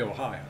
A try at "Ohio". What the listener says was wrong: Ohio. It's not Ohio. It's not three syllables. It's Ohio. Ohio.